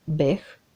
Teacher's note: Гласот Х на крајот од зборот се чува.